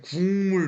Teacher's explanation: 예사 소리에서 비음 이응으로 바뀌었으니 방식이 바뀌었다고